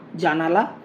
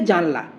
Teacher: দন্তন্য এবং লয়ের মাঝে যে আধ্বনিটা ছিল সেটা লোপ পেয়েছে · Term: মধ্য স্বরলোপ